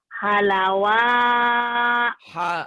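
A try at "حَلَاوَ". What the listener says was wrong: Salah. Salah. Salah. Panjang pendeknya. Iya salah. Yang ujung itu yang salah. Yang ujung salah. Kata Bu Lilis juga salah.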